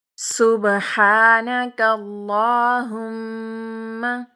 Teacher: اور اس کے علاوہ میم جو ہے اس کے اوپر شد ہے، تشدید ہے، تشدید والا میم ہو یا نون ہو اس کو ہمیشہ غنّے کے ساتھ ادا کرتے ہیں